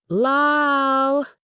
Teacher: Feel that definite contact point between your tongue tip and the roof of your mouth, right at the front.